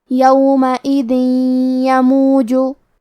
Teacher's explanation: یا حروف الادغام بغنہ میں سے ہے، اور ادغام کا معنی ہے حرف کو حرف میں داخل کرنا. تو ہم یہ تنوین کو یا میں ملا کے غنہ اور تشدید کے ساتھ یہ حکم کو ادا کریں گے